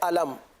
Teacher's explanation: علم یہاں پر میم کو ظاہر کر کے پڑھیں گے, یعنی گنہ نہیں کریں گے